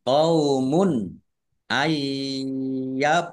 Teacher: Nun sukun bertemu dengan huruf ya, bacaan idgham bigunnah. Masuk dengan mendengung, yaitu mendengung ya, ditandai yaknya ada tasdidnya.